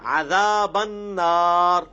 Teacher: نون کے اوپر پھر تشدید ہے، غنہ بھی ہوگا